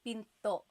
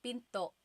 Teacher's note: Do you hear the glottal stop when I say pinto?